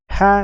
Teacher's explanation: ha yang kita baca adalah ha yang keluar dari tenggorokan bagian tengah